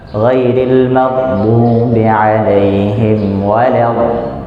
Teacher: Huruf dhad ini juga punya satu sifat yang dia khusus, sifat lazimah untuk dia dan hanya untuk dia aja, nggak ada huruf lain yang punya sifat tersebut, yaitu sifat istiqalah ya, istiqalah, atau ada sedikit memanjangkan ketika baca huruf dhad yang mati ya. Maka kalau kita baca surat Al-Fatihah ya, ayat terakhir, ghairil maghdubi 'alaihim waladdallin.